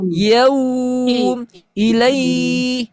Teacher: Kalau wau sukun mengarahnya ke bunyi vokal u. · U dan i-nya harus dibaca panjang. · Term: madlin